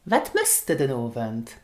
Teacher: Wat möchtest du den Abend? And instead of using du, okay, we use the weak form of du, which is de.